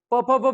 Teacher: प प प म्हणताना ओठांची हालचाल व्हाली म्हणून ओष्ठ्य